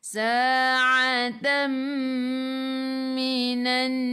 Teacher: Kalau mim dengan nun di atasnya ada sabdu, itu adalah idgham ma'al gunnah, masuk bersama dengung 2 harakat · ai'u daripada kerongkong, bukan daripada hidung. Atam minan alif lam syamsiyah, lam tak ada sukun, selepasnya ada sabdu, terus tekan ke dalam nun dan dengung 2 harakat wajibul gunnah.